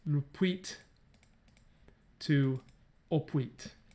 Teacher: So we go from lupuit to opuit. So this L vocalizes to O.